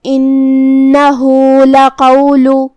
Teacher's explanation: کلمت لقول میں یہاں لام پہ زبر ہے تو اس کا دھیان رہے. حرف القاف کو ہم زبان کی جڑ اور تالو کے نرم حصے سے ادا کریں گے. آخر میں لام پہ پیش ہے تو اس کا بھی دھیان رہے.